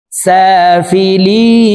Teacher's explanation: লি 3 আলিফ টেনে নুনকে সাকিন করতে হবে, কারণ মদর হরফের বামের হরফে ওয়াকফ হইলে মুদ্দা আরজি 3 আলিফ টেনিয়া পড়িতে হয়।